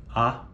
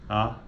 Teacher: baixa pode ser média alta ou média baixa então por exemplo a vogal com esse som a ela é classificada do ponto de vista da altura da língua Como baixa